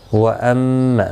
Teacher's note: میم مشدد پر گنہ ہوگا